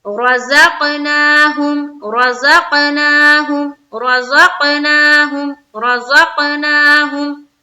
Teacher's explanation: نا کو بھی کھینچنا ہے ایک الف کی مقدار کے بقدر